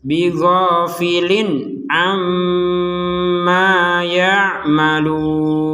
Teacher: tanwin bertemu ain, maka kita membacanya dengan jelas.